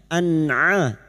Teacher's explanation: huruf ain yang memiliki sifat jahar dan tawasud, jangan samakan dengan hamzah